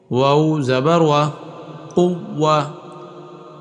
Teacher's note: واؤ یہ لفظ جہاں بھی آئے ہونٹوں سے نکلتا ہے اور ہونٹ گول کرنے پڑتے ہیں، تب اس کی ادائیگی صحیح ہوتی ہے